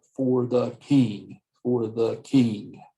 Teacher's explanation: The for and the, you wouldn't put stress on it. You would put stress on the noun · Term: anapest